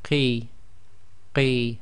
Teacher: again blocking the throat before you make the sound and then letting the sound out. Qi, again that's not necessarily completely full mouth.